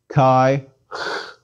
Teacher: do not have in english it's equivalent to a soft k one makes a k sound but lets the air seep through the back of the throat as one pronounces it the air escapes is equivalent to the ch in scottish loch